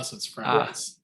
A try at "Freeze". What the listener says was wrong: It's spelled fries, but it's pronounced freeze.